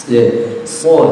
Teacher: sofir itu ya suara tajam yang keluar dari sela-sela antara ujung lidah, ujung gigi seri bagian atas dan ujung gigi seri bagian bawah